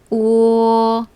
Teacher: 오는 완전한 오가 아니라 오, 약간 끝에 으에 가깝게 발음하고요